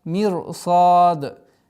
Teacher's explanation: Мирсад. Здесь сад твердый, удлинение в размере двух огласовок, аннулируется кесра, уходит в сукун.